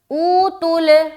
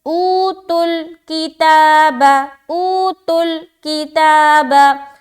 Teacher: او تل کتابا، او تل کتابا. جیسے تا لام میں ملے گا وہاں پر آواز ڈراپ ہو کے پھر کاف سے اٹھے گا